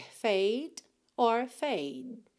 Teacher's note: Você encosta a língua no céu da boca e já interrompe o som.